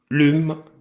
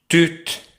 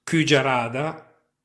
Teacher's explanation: si pronuncia U arrotondata, labbra come U, lingua come I.